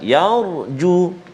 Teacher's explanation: Kalimah yarju iaitu ra sukun ataupun ra baris mati sebelum dia huruf ya berbaris atas, maka ra tu kita baca tebal